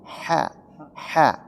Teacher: Ha-nya di sini harus ada keluar napas. Ha tipis. Ha ha bukan ha tapi ha.